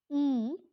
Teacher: it is raised to a position just above half close